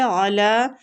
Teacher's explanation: علی لام کو کھینچیں گے کھڑی زبر کی وجہ سے